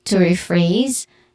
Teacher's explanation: Phrase is the stressed syllable here. Re has a long E sound, and then phrase has a buzzing sound at the end.